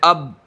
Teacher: مثال کے طور پر حمزہ با زبر اب آپ بولیں اب، کہاں ٹھہری آواز؟ دونوں ہونٹ کے اوپر